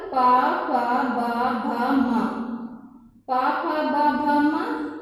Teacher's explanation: इसका जब हम उच्चारण करेंगे तो इसका उच्चारण हम ओठ से करेंगे।